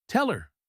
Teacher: The word her loses its h. "Tell her. It sounds like teller. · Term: disappearing h